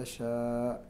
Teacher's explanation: المد متصل قبل الهمزة ويسمى بالمد الواجب ويمد بجميع القراء كما أسلفنا.